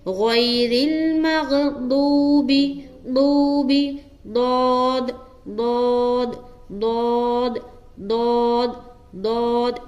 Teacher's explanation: دود کا مخرج میں نے بتایا ہے کہ دود کو ادا جو کرتے ہیں زبان کا جو بغلی کنارہ ہے، اب داہنی جانب بھی ہے اور بائیں جانب بھی ہے، تو زبان کا جو بغلی کنارہ ہے اسے اپنے داڑھ کی جو جڑ ہے وہاں پر ٹچ کر کے دود ادا کرنا ہے